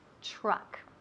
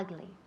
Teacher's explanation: esa U suena como una A